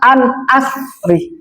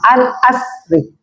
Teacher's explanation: ro yang di belakang itu tetap dibaca nih, tetap dibaca dan dipersingkat